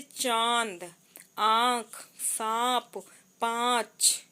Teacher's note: अनुनासिक नाक और मुंह दोनों से निकलती है। · जिन वर्णों पर चंद्र बिंदु लगा रहता है उनके उच्चारण में वायु नाक और मुंह दोनों से बाहर निकलती